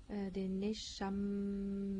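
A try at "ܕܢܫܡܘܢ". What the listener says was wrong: Non, là, attends, il y a beaucoup trop de voyelles là-dedans. Danshammeu. Danshammeu. Il n'y a pas de voyelle.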